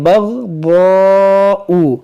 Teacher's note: गैन को मोटा करेंगे, दाद को मोटा करेंगे